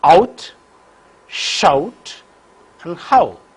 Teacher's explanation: the lips are unrounded for the first element rounded for the second element · articulation of the diphthong the glide movement begins from a position the glide movement begins from back open position and moves in the direction of rpo the lips are unrounded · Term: diphthong ow